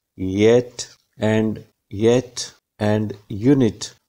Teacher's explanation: the front of the tongue may be raised towards the hard palate to produce the consonants at the beginning of the words